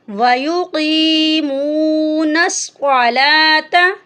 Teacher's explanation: بالغیب وَيُقِيمُونَ الصَّلَاةَ، یہاں پر 2 نقطوں والی قاف ہے، اس کو بھی ہم موٹا کر کے پڑھیں گے، اور صاد جو ہے یہ بھی موٹا حرف ہے، اس کو بھی ہم موٹا کر کے پڑھیں گے۔ لام کے اوپر کھڑی زبر ہے، اس کو ہم 1 الف کی مقدار کے برابر لمبا کریں گے۔